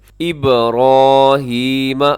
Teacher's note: اب یہاں ابراہیم بے با قلقلہ ہے